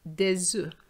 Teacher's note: I'm also making a liaison with the S and the O.